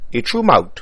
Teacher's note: The theta sound becomes a t in many cases here